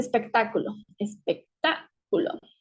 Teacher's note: espectáculo es una palabra esdrújula porque esta fuerza de voz la tiene en la antepenúltima